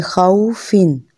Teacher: दोनों होंठों को गोल करके पढ़ेंगे, और इसमें एहतियात क्या होनी है कि फ़ा की तरह दांतों को होंठों से नहीं लगाना, बल्कि दोनों होंठों को गोल करके अदा करना है, और वही कि हरकत वाले वाव को लंबा नहीं करना और ना ही झटके से पढ़ना है।